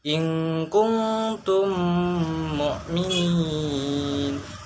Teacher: Cara membacanya adalah seperti menyuarakan mim rangkap atau ditasjidkan dan wajib dibaca dengung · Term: idgham mimi